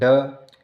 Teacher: ड सघोष और अल्प प्राण है।